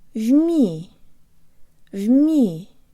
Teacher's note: There's almost a Y sound built into the M.